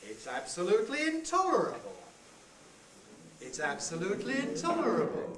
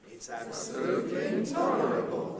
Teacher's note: the rising head. Starts on a very low pitch and rises.